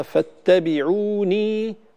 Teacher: بيان الياء، ولا يجوز حذف الياء هنا لأنها ياء مدية